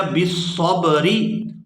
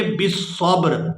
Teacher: وقف کے بغیر اس کو پڑھا جائے گا بالصبری اور وقف کے ساتھ اس کو پڑھیں گے بالصبر۔